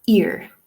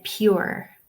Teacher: in Ireland we tend to pronounce our R's very strongly at the end of words. So ear for me.